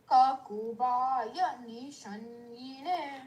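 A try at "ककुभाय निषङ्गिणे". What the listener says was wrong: Allow ya to be completed. Don't rush. Kakobhaya nishangine.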